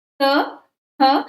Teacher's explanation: दंत से त, थ आप बोल के देखिए इसमें दांतों का प्रयोग होता है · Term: दंते वर्ण